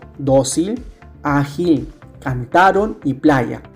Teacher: Son palabras graves porque llevan la mayor fuerza de voz en la penúltima sílaba.